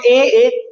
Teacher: ए चिलाइएगा तो यह कंठ और तालु से निकलेगा